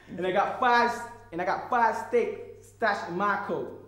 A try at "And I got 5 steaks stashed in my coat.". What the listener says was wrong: You're still stressing out. You've got to, where you won't get the laugh if you say my. If you stress my.